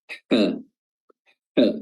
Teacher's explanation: huruf ha tidak menutup tapi menyisakan celah yang sangat kecil, ha, ya. Walaupun sama-sama di tenggorokan tengah, tapi cara keluar huruf tersebut berbeda.